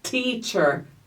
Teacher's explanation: você vai encostar a ponta da sua língua atrás da sua arcada superior aqui da boca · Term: fonema T